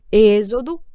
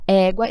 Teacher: Êxodo, o é um som fechado. Já égua, esse é aberto